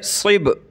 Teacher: ये सौद को मोटा करके पढ़ेंगे, सौद को बा से मिलाएंगे।